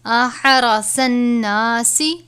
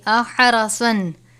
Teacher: صاد ہے پر کر کے پڑھیں گے